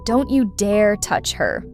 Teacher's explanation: When you say don't you dare touch her, stress dare.